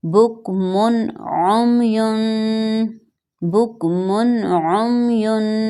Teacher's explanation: اس کے فوراً بعد نیکسٹ ورڈ میں عین ہے جو کہ ہلکی لیٹرز میں سے ہے، تو اب ہم بک من کی تنوین پر غنہ نہیں کریں گے، صرف اظہار کریں گے